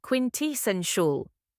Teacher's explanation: The second syllable is tea, not tay. Think quint plus essential.